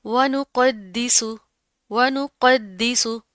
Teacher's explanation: सीन के ऊपर आपने सीटी की आवाज़ पैदा करनी है